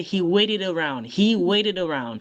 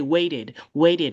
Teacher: when the t is in the middle of two vowels, it doesn't sound like a t. It sounds like a d.